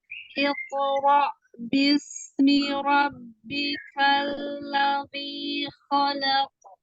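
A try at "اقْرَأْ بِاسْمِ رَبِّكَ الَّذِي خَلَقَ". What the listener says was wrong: Iqra. Qafnya jangan pakai dhamma safatain, tidak pakai bibir. Iqra. Iqra. Iqra. Iqra. Biar dia tebalnya mudah kalau nggak pakai bibir.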